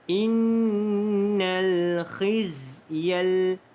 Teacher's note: Innal alif lam qamariyah dibaca dengan bunyi lam tersebut.